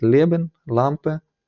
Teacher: якщо вона стоїть попереду то звичайно тут буде вона чітка буде л